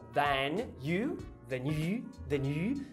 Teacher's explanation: Por último, bem simples, você vai juntar o than you, than you, than you, direto o N, que tá aqui nos alvéolos. Você puxa pra trás pro palato pra fazer o you,